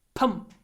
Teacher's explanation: we have a p at the end, and the p makes the m shorter.